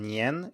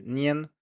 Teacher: a second tone nien and then another second tone t so the middle tone here can vary a bit and turn into a first tone so instead of saying nien it turns into nian so the